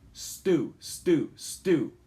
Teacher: when you say Stu you don't feel that puff of air